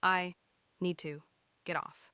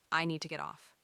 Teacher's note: The D sound and T sound blend together. Need to. It almost sounds like need.